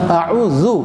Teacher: जाल में सीटी नहीं होगा, बिल्कुल नरम के साथ